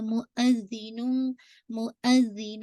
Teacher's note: ٹھیک ہے، زال کو واضح کیجیے گا اور زال پہ شد ہے تو ٹوائس اس کو ریڈ کیجیے گا